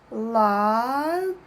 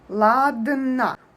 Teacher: We put our tongue up and we make a pause, we make the sound a bit longer and we move to n sound. Ладно. The last sound is a because unstressed o is always a.